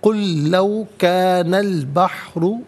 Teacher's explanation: کانا البحر، کانا میں نون پر زبر ہے، اس سے البحر کی لام ساکن کے ساتھ ملائیں گے، درمیان میں سے الف نی حمزہ کو حذف کیا جائے گا۔ بحر میں را پر پیش ہے، را کو پر کر کے پڑھا جائے گا